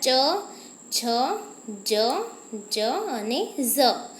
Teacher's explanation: જ્યારે આપણી જીભ તાળવે ચોંટે છે ત્યારે જ આપણે આ શબ્દો બોલી શકીએ છીએ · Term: તાલવ્ય